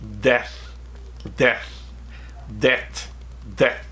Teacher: We don't have we don't use the tongue between the teeth like Americans do.